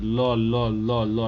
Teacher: दांत में मेरा जीवा सट रहा है। · लो का उच्चारण स्थान कहाँ हो जाएगा? दंत हो जाएगा।